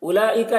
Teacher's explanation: मद्दे मुत्तसिल को 3-4 अलिफ के बराबर खींच कर पढ़ेंगे, क्योंकि हरफ मद के बाद हमज़ा इसी कलीमा में.